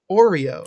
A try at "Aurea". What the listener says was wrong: It's an A.